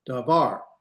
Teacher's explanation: In Hebrew, the natural accent is at the end.